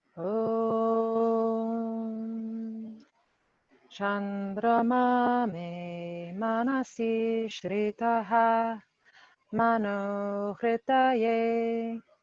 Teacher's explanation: it starts lower.